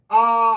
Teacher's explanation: विवृत स्वर में पूरा मुंह खुलता है।